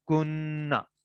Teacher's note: اوپر شد آ جائے گی تو غنہ بھی ساتھ ہم کریں گے · دو نون اکٹھے ہو جائیں گے، اور پہلا نون ساکن ہو اور دوسرا نون جو ہے زبر والا ہو تو پہلا نون دوسرے نون کے اندر مرج ہو جائے گا. تو یہ بن جائے گا کننا.